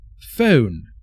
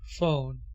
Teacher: In British English, the O sound is pronounced as a diphthong with 2 vowel sounds, and in American English it is pronounced as a monophthong with 1 vowel sound.